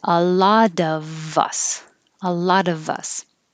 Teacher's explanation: And even though of is pronounced with a V, we won't hear the V unless a word after it begins with a vowel.